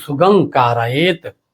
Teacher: सुगम कारत अब इसको हम बोलेंगे सुगम कारतकि अगर हम म बोलेंगे अनुस्वार को तब तो ओ सट जाएगा हमको यहां ओ सटाना नहीं है क्योंकि क के कारण उस अनुस्वार का उच्चारण अंग की तरह होगा कंठ से करना होगा क्योंकि कंठ से क बोलते हैं